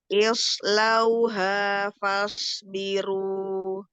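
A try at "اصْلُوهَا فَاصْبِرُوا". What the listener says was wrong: Shotnya kurang tebal sedikit.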